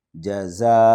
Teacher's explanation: یہ مد متصل ہے، 5 الف کے برابر اس کو کھینچیں گے ، اور یہاں پر ام میں تنوین کے بعد میم ہے،